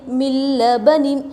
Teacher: نون ساکن کے بعد لام آ رہا ہے یرملون میں سے بلا غننے کے جلد پڑھیں گے ، بغیر غننے کے ملا کر پڑھیں گے، ٹھیک ہے، لام